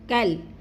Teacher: کاف کو لام کے ساتھ ملانا ہے، جیسے کل، لمبا نہیں کرنا اس کو